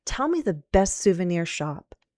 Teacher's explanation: if you say, tell me, you'd go down because that's a command, a request, right? Tell me the best souvenir shop.